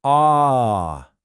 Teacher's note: It's that nice open a sound just like in the word father.